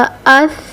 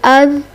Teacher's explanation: देखिए जब हम इसको साकिन करके पढ़ रहे हैं तो हमारी ज़बान की नोक जो है वो ऊपर वाले सामने वाले 2 दांतों के किनारों से लग रही है